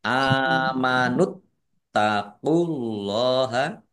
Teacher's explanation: Kemudian tan-nya dibaca dobel ada tasdidnya. Allahnya dibaca tebal karena harakat di depannya domah. Lam fathah berdiri mad thobi'i panjang dua harakat.